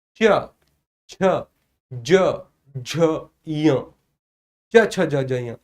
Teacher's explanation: च, छ, ज, झ यह सर तालु के द्वारा उच्चारित होगा।